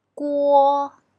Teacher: pronunciation is a transition from U to o u is short and quiet while all lasts long and loud